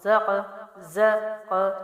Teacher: قاف جو ہے حروف قلقلہ ہے تو زا کو قاف سے ملا کے باؤنس کریں گے